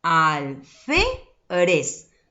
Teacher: ¿Dónde está la mayor fuerza de voz? En la penúltima sílaba. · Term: sílaba tónica